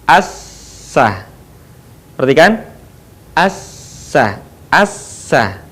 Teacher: ketika kita melafalkan huruf sin, maka posisi lidah kita ada di bawah